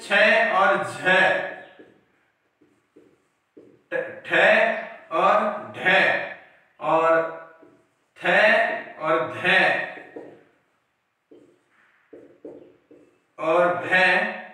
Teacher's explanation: महाप्राण मतलब था जहां मुख से अधिक वायु भार आए